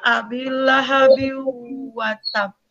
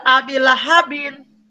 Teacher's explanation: Nah, tidak abi lahabin, ya, atau abi lahab, tetapi abi lahabi wa tab. Jadi huruf tanwinnya itu sama sekali tidak terdengar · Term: idgham bigunah